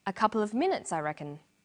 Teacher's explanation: The man answers with a statement. A couple of minutes, I reckon. This takes a falling tone. In English, statements usually end in a falling tone.